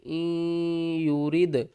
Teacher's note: حمزہ نون یا زیر این، یا پیش یو، این یو، را دال زیر رد، این یورد، دال ساکن ہے، اس کے اوپر قلقلہ کریں گے۔ این یورد، نون کو ہم نے را کے ساتھ ملانا ہے